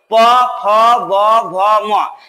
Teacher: উচ্চারণ করার সময় তোমরা ভালো করে লক্ষ্য করো, দেখো ওষ্ঠ এবং অধরের স্পর্শ হচ্ছে। যতক্ষণ পর্যন্ত স্পর্শ না হবে ততক্ষণ পর্যন্ত কিন্তু প বর্গের বর্ণগুলো তোমরা কখনোই উচ্চারণ করতে পারবে না। · ওষ্ঠের সঙ্গে ওষ্ঠের স্পর্শ হওয়ার কারণেই এই বর্ণগুলো উচ্চারিত হয়, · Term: ওষ্ঠবর্ণ